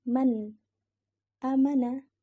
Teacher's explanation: Nah, nun sukun bertemu dengan hamzah, maka bacanya harus jelas. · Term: idhar halki